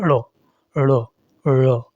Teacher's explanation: इन व्यंजनों के उच्चारण में जहवा के अगले भाग को तालु के किसी भाग तक ले जाकर अचानक नीचे गिराया जाता है। पहले जीभ तालु तक जाती है फिर अचानक नीचे गिरती है। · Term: उत्क्षिप्त व्यंजन